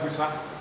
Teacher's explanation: Now you hear some speakers, especially in Asante, they'll pronounce this busa.